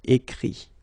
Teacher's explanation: Remember that phonetically this final T doesn't exist. Okay? So the sound will be only this I.